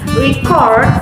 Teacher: pronouncing the word record with stress on the first syllables, record, indicate a noun, whereas stressing the second syllables, record, makes it a verb.